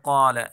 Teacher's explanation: قال قاف کو موٹا پڑھیں گے یعنی پر پڑھیں گے